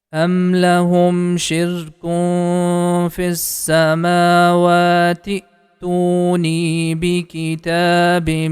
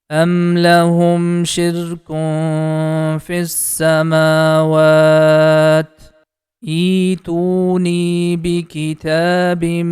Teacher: Simply we can connect this T sound with letter Hamza. This syllable becomes the T is going to connect with Hamza. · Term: connect the T sound